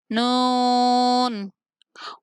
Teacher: نون زبان کا کنارہ اوپر والے دانتوں کے مسوڑوں سے لگے تو نون ادا ہوتا ہے